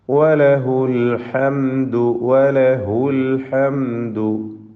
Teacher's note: ഹൗ ദമീർ വന്നിട്ടുണ്ട്, സില, പക്ഷേ ദീർഘം അല്പം പോലും വരികയില്ല. കാരണം ശേഷം ഉള്ള അക്ഷരത്തിന് സുക്കൂനാണ് എന്നതുകൊണ്ട്.